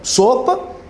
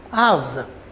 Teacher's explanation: o s pode ter o som de c né como na palavra sopa mas o s também vai ter som de z como na palavra asa não é o mesmo fonema a mesma